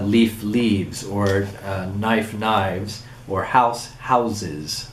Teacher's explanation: the regular uh plural morphine being added to the stem but you also get a consonant mutation in the final consonant of the stem so that F becomes V or S becomes Z it's a voicing that's taking place there